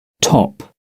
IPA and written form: tɒp (top)